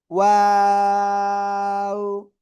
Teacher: এই দুই ঠোঁট গোল করিয়া, শুরুতে গোল হবে, মাঝখানে দুই দিকে যাবে, আবার শেষে এসে গোল হবে। ওয়াও, তিন আলিফ টান হবে।